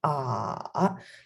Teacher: it's a low tone so it goes like ah so the trick is uh you need to drop your voice to the lowest point · you need to drop your voice to the lowest point until it breaks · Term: third tone